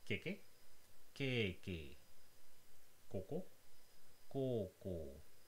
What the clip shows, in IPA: keke keːkeː koko koːkoː